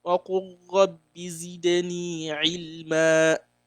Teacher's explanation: I didn't pronounce the lam at all